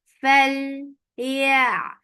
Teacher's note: Lam will get sifa of tawassut, and tawassut is medium flow of sound. You will not stop lam abruptly, but the sound should go travel little.